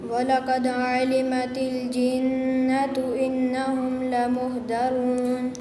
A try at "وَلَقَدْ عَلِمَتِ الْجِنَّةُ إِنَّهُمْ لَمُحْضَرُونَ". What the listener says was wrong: دا نہیں بیٹے، دواد ہے، ٹھیک ہے۔ دواد حروف مستعلیہ میں سے اس کو پڑھنا ہے اور اس کی ادائیگی دال اور دواد میں فرق ہوتا ہے، ٹھیک ہے۔ وَلَقَدْ عَلِمَتِ الْجِنَّةُ إِنَّهُمْ لَمُحْضَرُونَ۔